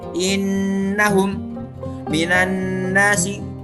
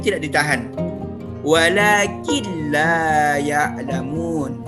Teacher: maka dibaca lebur tanpa dengan dengung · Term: idgham bila gunnah